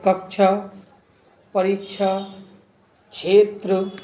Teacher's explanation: इसमें हल्का का और श की मिलीजुली ध्वनि रहती है